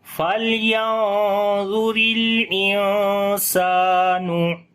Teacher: ٹھیک ہے۔ تو حمزہ کو نون کے ساتھ ملائیں گے اور نون کی آواز یہاں پر چھپا کر پڑھیں گے کیونکہ نون ساکن کے بعد یہاں سین ہے · یہاں سین کو لمبا کریں گے، الف مدہ ہے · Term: اخفا